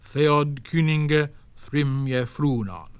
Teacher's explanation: there were 2 stressed syllables in each half of each line